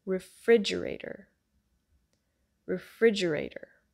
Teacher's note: The stress is on the I, like pig sound, and there's a flap T, so the T sound turns into a D.